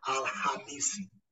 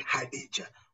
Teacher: we tend to give less stress in the letter K. But give more stress in the letter H in the pronunciation. Then we'll be saying Al-Hamisi.